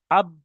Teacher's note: দুই ঠোটের ভিজে অংশ হতে উচ্চারিত হয়